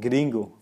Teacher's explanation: you need to roll your R's, or at least to tip it for a word like gringo